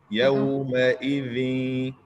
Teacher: The little dhal in يومئذ, the little tip of the tongue touches the upper teeth.